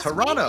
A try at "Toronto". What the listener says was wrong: It's Toronto. There's the other T is silent. Yeah, Toronto.